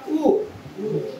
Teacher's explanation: आता लहान उ म्हणा किंवा मोठा उ म्हणा, आपले ओठ कसे होणार आहेत? गोल. बरोबर आहे. आणि गोल होऊन ते वर्ण उच्चारले जातात म्हणजे ओठांचा उपयोग केला जात आहे.